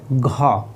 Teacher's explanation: हमें ये डायरेक्ट कंठ से आवाज़ आ रही है